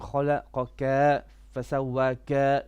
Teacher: You're stretching your ka all the time.